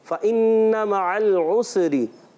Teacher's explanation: सीन में कलकला नहीं करेंगे